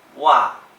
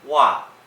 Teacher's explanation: there's actually the slight hint of a G at the beginning of that word, which is reflected in the pinyin that we'll put on the screen. · The second tone starts very high and goes down very, very quickly. It's just like fourth tone in Mandarin. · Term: slightest G